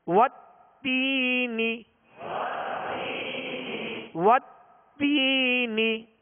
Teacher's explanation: تا یا زیر تی یا مدہ ہے, ایک الف کی مقدار کھینچیں گے اور نون کو بغیر کھینچے بغیر جھٹکا دیے اس کی زیر کو معروف طریقے سے ادا کرنا ہے.